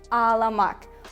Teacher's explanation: Just ignore soft G, drop it, and just pronounce a like a double sound. Softer, longer, and like a double sound.